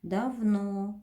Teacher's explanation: Ударение падает на О. Безударный гласный А.